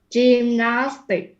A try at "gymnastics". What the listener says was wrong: Don't stress the last x. It should be like this. Gymnastics. The stress is on the nas. Nas. Gymnastics.